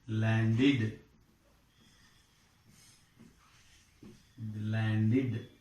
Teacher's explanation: Now this past tense ending, this is a past tense ending. This past tense ending is pronounced as id